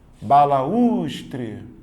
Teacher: a letra U é a segunda vogal do hiato, é tônica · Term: regra dos hiatos